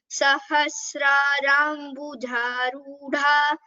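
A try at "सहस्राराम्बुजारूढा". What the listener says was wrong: So you where there is a Mahaprana, only there you need to give stress. For example, Sahasrarambuja. There is the for Ja, it is an Alpa Prana. So it's Ja, that's all.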